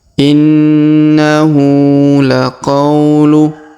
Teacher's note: huruf qa diayun sekali karena di depannya terdapat waw sukun